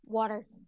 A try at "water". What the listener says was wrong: Yeah, it sounds more like a D.